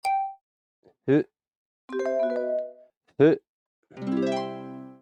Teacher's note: the lady, if you listen carefully, is saying hu, as in hu, but with a forced h, which makes it sound very close to fu.